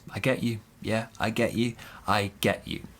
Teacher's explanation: big stress on get